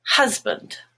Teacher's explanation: hus, which is mustard, is the stressed part, and band becomes bund